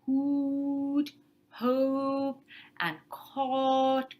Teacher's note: Rounded vowels are things like hoot, hope, and caught, right? And so these are high back rounded. Oo is a high back rounded vowel.